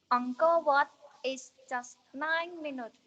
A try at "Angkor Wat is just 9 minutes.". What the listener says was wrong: Okay, very good. Minutes is very difficult, but you are clear perfectly.